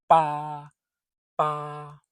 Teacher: Close your lips. Let them move softly. Almost no puff of air. Just a small, clean sound.